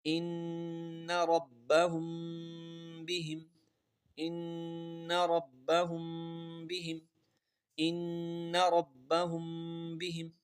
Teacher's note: نون کے اوپر شد ہے، ہمیشہ غنہ ہوگا. اس کے بعد جو ربہم میں میم کا قدر بھی دیکھیں، وہاں پر غنہ ہے، کیونکہ میم ساکن کے بعد با آ رہا ہے. · میم ساکن کے بعد با ہے، اس لیے یہاں پر غنہ کر کے پڑھیں گے